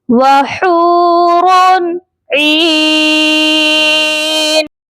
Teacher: عین کے ساتھ یہ مدہ ہے، اسی لیے عین کو ہم ایک الف کی مقدار لمبا کر کے پڑھیں گے، اور جب ہم یہاں پر وقف کریں گے تو نون کو ساکن کر دیں گے، یہ پڑھا جائے گا وحور عین۔